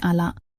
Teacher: ada yang seolah-olah menghilangkan huruf nun begitu saja, sehingga terdengar seperti ala. Ini mengubah makna dari bahwa tidak ada menjadi seperti ingatlah.